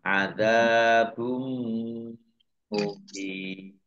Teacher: Domah tanwin bertemu dengan huruf mim, bacaan idgham bihunnah, masuk dengan mendengung, yaitu mendengung mim. Ditandai mimnya ada tasdidnya. · Ditandai mimnya ada tasdidnya. Ditahan 2 harokat biar tampak dengungnya.